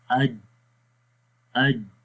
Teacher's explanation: ایک تو اس میں سانس رک جاتا ہے اور دوسری جو اس کی جیم کی کوالٹی ہے وہ شدت ہے۔ شدت کا مطلب ہوتا ہے سختی، یعنی کہ جس حرف کے اندر شدت والی صفت پائی جاتی ہے اس حرف کو ہم سختی کے ساتھ پڑھتے ہیں، اور مطلب وہاں پر ہوتا کیا ہے کہ آواز مخرج میں بند ہو جاتی ہے۔